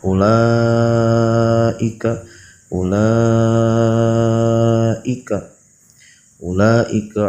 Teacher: Ulaika, pada lafaz ulaika di situ hukumnya mad wajib muttasil. Adapun ukuran panjangnya ketika membaca mad wajib muttasil yaitu 6 harakat.